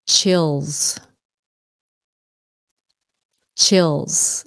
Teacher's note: so it sounds like a z at the end